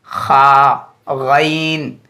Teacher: उसके बाद खा, जहाँ से ख अदा होता है वहाँ से एक और हर्फ अदा होता है गईन। खा, गईन, ये दोनों हर्फ सबसे ऊपर वाले हलक से अदा होते हैं, यानी सबसे ऊपर का जो हलक है यहाँ से अदा होते हैं।